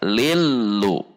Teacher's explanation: Thali, li masuk ke lam tasydid di depannya, dibaca lillu. Ingat, lam memiliki sifat bainiyah, sehingga ketika tasydid dibaca tidak ditahan, tidak juga dihentak